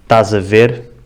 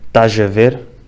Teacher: Já o sotaque algarvio é muito característico por usar o som G em vez do som Z para ligar palavras que acabam em S com palavras que começam com vogal